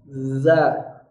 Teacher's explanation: Jadi bukan digigit lidahnya, tapi lidahnya itu menempel lembut di ujung gigi seri atas.